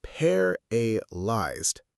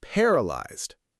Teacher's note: The stress is on the first part, paralyzed.